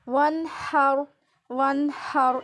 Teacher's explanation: واو نون زبر ون ہا را زبر ہر وہاں یہاں پہ اظہار ہو رہا ہے, ٹھیک ہے. نون ساکن کے بعد ہا حروف حلقی میں سے آ رہا ہے, یہاں پہ اظہار ہوگا